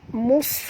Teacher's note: huruf sad tebal, jangan baca mus. Kalau baca mus jadi sin, ini huruf sad, mus, mus tebal ya.